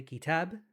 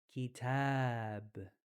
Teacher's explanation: whenever there's an alif after a fatha, we're actually going to extend the sound of the A. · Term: extending the A sound